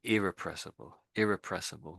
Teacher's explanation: there's a little bit of emphasis on the I at the beginning, irrepressible, and perhaps that E there, I guess.